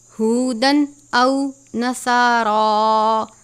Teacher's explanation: صاد اور را دونوں کو پر پڑھیں گے